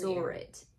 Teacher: Because the word saw doesn't have a r sound and neither does it, but it's an intrusive r that makes its way between saw and it. So it just appears out of thin air.